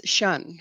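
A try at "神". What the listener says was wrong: S-H-U-N. You should be S-H-E-N. Shen.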